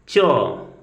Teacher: तालव्य में च, च को जब हम लोग बोल रहे हैं तो यहाँ पर हम महसूस करेंगे कि च को बोलते समय हमारी जिह्वा जो है ऊपर जाके हमारे तालु से स्पर्श कर रही है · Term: तालव्य वर्ण